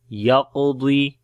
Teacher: Qaf and dad we read in heavy sound due to isti'la letters, and on the qaf we make qalqala, which is the weak qalqala